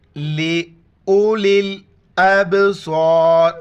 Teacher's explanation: حمزہ کو با کے ساتھ ملاتے ہوئے کلکلا کرنا ہے، صاد اور را کے موٹا پڑھنا ہے ، لے اولل ابصار، سخت مقام ہے،